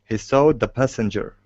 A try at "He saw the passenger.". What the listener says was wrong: Instead of saw. Leave your mouth open for that. So it's he saw. He saw the passenger.